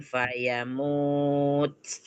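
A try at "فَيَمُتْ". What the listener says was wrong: pendek. Fayamut pendek.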